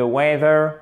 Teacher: un accent tonique sur la première syllabe